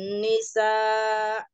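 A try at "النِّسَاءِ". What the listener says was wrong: Panjangin lagi. Nisa.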